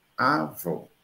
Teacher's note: Mas em avó, que continua as mesmas letras, onde eu digo assim, a avó, para distinguir do masculino, eu mudo o timbre de fechado para aberto.